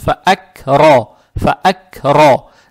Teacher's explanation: фатха приобретает оттенок о, ро читается твердо